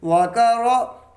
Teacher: را پہ زبر ہے، را کو موٹا پڑھیں گے، پر پڑھیں گے